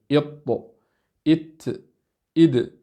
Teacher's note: هذه الحروف الثلاثة مخرجها واحد، كلها تخرج من طرف اللسان مع وصول الثنايا العليا، إط إت إد، فتخرج كلها من طرف اللسان مع أصول آخر الثنايا العليا